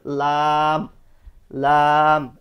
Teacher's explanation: জিহ্বার আগা এ থেকে সামনের যে দাঁত, সামনের যে পাটি, এই দাঁতের সাথে লাগবে, দাঁতের আগার সাথে লাগবে